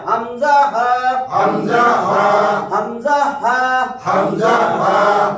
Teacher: 1 নম্বর মাখরাজ হলকের শুরু হইতে হামজা হা, শক্ত কইরা গলা ছাইরা